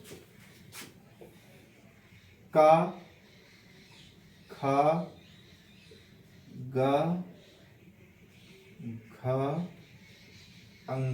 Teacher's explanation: जब उच्चारित करते हैं तो कंठ से वायु निकल जाती है, बाकी किसी मुंह के किसी भी स्थान को नहीं टच करती है। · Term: कंठस्य व्यंजन